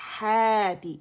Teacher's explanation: پھر ہاتی, تو یہاں ہمارے پاس الف مدہ بنا تھا ہاتی میں, ہا کی آواز کو الف صغیرہ اوپر کی طرف 2 کاؤنٹ کے لیے کھینچ رہے